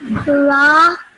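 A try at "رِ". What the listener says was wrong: Okay, the letter is ra, yes, but because it has a kasra underneath it, the sound changes and you would pronounce this as ri.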